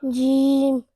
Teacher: It's a Shajariya letter and it's pronounced from the middle part of the tongue, touching the middle part of the palate, meaning top of the mouth.